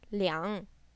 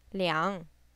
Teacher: This is a falling rising tone.